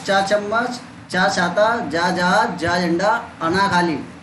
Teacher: ऐसी तालु से कौन से वर्ण बोले जाते हैं? चा वर्ग।